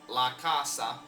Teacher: they map the central vowel a to this back vowel a